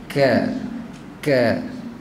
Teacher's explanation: Ka ni dia syiddah, tapi dia hamas. Dia tertahan suara tapi terlepas nafas.